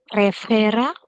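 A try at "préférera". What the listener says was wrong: It's not prefera. It's preferera. तो आप समझ रहे हो, उसमें 3 आर आ गए. सबके सब प्रोनाउंस करना है. प्रेफेरेरा. And if you are actually speaking the French आर तो दिमाग खराब हो जाता है ये बोलने में. प्रेफेरेरा.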